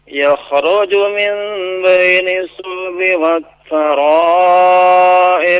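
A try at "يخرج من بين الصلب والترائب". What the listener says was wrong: Tasydid pada huruf sad ya, dipraktekkan Pak.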